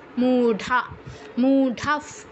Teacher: বিসর্গ স্থলে ফ এর মত উচ্চারণ হবে যেহেতু পরের শব্দে প আছে